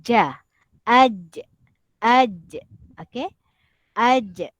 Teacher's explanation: Untuk sebutan huruf ja, huruf jim, dia sedikit kena ditekan kepada lelangit atas.